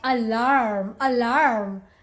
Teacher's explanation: US people, they pronounce their mid-Rs a lot, okay? They call it alarm, alarm.